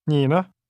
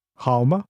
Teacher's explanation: the syllables 呢 and 吗 are pronounced using this soft falling sound, as if the sound is fading away.